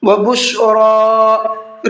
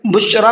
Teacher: را کے اوپر کھڑا زبر ہے، اس کو تھوڑا کھینچنا ہے، عام طور پر لوگ یہ غلطی کرتے ہیں، یہاں پر بشرا کا جو یہ کھڑا زبر ہے اس کو نہیں کھینچتے ہیں بلکہ بشرا پڑھتے ہیں، بشرا، اس کا دھیان رکھیے گا، آپ کھڑا زبر ہے اس کو کھینچ کر کے پڑھنا ہے۔